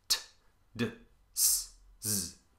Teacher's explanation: All of these are tongue against alveolar ridge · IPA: t d s z